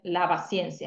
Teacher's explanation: una P parcialmente sonorizada